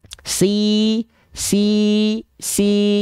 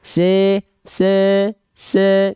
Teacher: kalau misalnya kita melafalkan si Tengah lidahnya naik pasti clear vokal i-nya